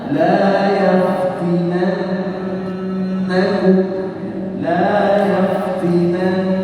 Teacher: ada Nun tasydid yang hukumnya wajib gunah atau wajib dibaca gunah dengan ditahan dua harakat